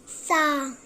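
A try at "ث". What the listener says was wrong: जबान की नोक बाहर निकालो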